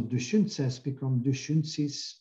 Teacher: Vowel raising means that unstressed vowels are raised to a higher position. In this case, e becomes i and o becomes u.